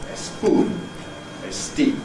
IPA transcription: eˈspuːn